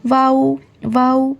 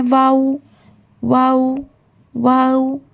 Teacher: जब दोनों होठ को हम गोल करते हैं, वाऊ वाऊ, दोनों होठ को गोल करके आगे ले जाते हैं तो हर्फ वाऊ अदा होता है